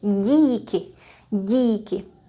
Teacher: The j is soft and palatalized, and we also use the middle of our tongue, or let's say the front part, not the tip. We raise it up against the hard palate right here. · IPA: /ɟ/